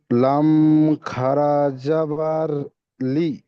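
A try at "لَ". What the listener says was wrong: লাম খাড়া যাবার লি হবে না, লাম খাড়া যাবার লা।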